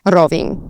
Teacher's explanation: So Rovinj. And you'd put the emphasis again more on the beginning of the word than on the end of the word. So instead of Rovinj, Rovinj.